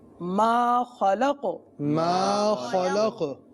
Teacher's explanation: قاف ساکن وقف کی صورت میں ہو گیا، لہٰذا یہاں پر قلقلہ کریں گے